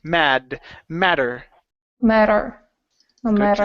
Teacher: okay give me a flap T here